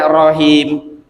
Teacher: Kalau kita melafalkannya rahim, nah itulah ha yang pangkal tenggorokan, seharusnya tengah tenggorokan.